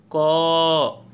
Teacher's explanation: आप देखेंगे कि कंठ पे ज़्यादा जोर पड़ रहा है बोलने में, इसलिए क का उच्चारण कंठ हो गया।